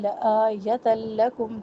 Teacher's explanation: تنوین کے بعد لام ادغام بلا غنہ